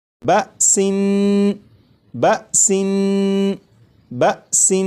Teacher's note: نون کو پڑھتے ہوئے زبان تالو سے لگا کر پڑھوں گا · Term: تنوین